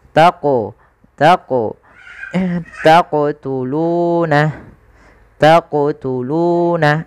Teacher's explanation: Qalqalah adalah bacaan memantul. Jadi ketika melafalkan huruf qaf itu ketika sukun dipantulkan.